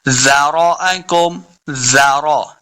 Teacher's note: زال کو بالکل نرمی کے ساتھ پڑھنا ہے، سختی کریں گے تو یہ زا بن جائے گا، زا نہیں بلکہ زال ہے، تو زال کو ہم نے نرمی کے ساتھ پڑھنا ہے۔